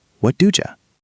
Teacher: when do and you meet, they often create a soft J sound. It sounds like dooja.